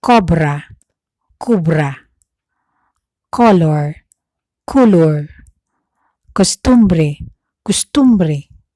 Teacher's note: the O sound written in Spanish or in English, which occur in any syllable, but the last syllable in the word will often be pronounced U by Bicol speakers